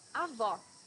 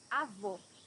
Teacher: Here you need to hear the sound of the last O in the syllable. It should be an open O, as we say in Portuguese.